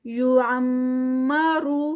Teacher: آگے یہاں پر میم مشدد ہے تو یہاں پر غنہ ہوگا۔ یعمرو را ہیوی کیونکہ پیش کے ساتھ